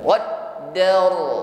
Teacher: Ra bergetar dan tebal.